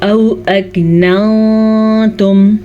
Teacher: नून को हम छुपा के गुन्ने के साथ पढ़ेंगे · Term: इख्फा